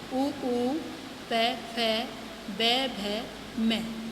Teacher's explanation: ओष्ठ यानी ये दोनों ओठ यानी होठों से बोले जाते हैं